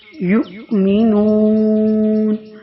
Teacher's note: حمزہ ساکنہ جو ہے وہ جھٹکے کے ساتھ ادا کیا جاتا ہے۔ یؤمنون جس جگہ پہ بھی حمزہ ساکنہ آ جائے تو اس کو جھٹکے سے پڑھا جاتا ہے۔